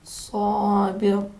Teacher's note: سین کے جگہ سے تلفظ کریں گے. لیکن صاد کو تلفظ کرتے وقت ذرا سین کو موٹا اور پرحجم بنائیں گے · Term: حرف صاد